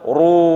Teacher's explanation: bacanya seperti ru, tebal, bercucu, ya, terus ya, terus setelah itu run, kembalikan ke makhrajnya nun, jangan al-kafirun.